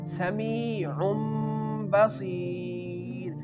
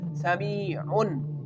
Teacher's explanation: Here the Tanween, which is double Duma on the Ain, we can change this Noon sound into Mim. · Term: Iqlab